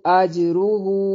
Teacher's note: جیم پر قلقلہ ہوگا کیونکہ جیم حروف قلقلہ میں سے ہے